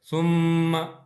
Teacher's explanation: آپ نے غنہ کرنا ہے، تو 2 حرکتوں کے برابر ثم یعنی اس طرح تھوڑی دیر ناک میں آواز جائے گی۔